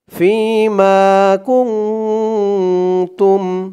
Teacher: কারণ নুন সাকিনের পরে ইকফার 15 হরফের এক হরফ তা আসছে ইকফা গুন্না নাকের ভেতরে লুকিয়ে করতে হয় · ইকফা গুন্নাহ নাকের ভিতরে লুকিয়ে করতে হয়